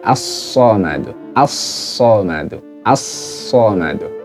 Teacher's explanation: Jadi awalnya Allahul Somadu menjadi Allahus Somadu. Jadi lam sukunnya dileburkan ke huruf sod. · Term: idgham syamsiyah